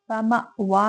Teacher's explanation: حمزہ پہ جھٹکا ہے تو اس کو جھٹکے کے ساتھ ادا کریں گے. وا میں کو 2 حرکت لمبا کریں گے کیونکہ اس کے اوپر کھڑا زبر ہے.